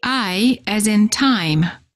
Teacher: For the I sound, the lips are open and not rounded, and they close a bit